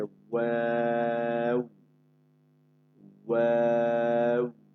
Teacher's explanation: দুই ঠোঁট গোল করে পাতলা আওয়াজে, দুই ঠোঁট গোল করে পাতলা আওয়াজে ওয়াও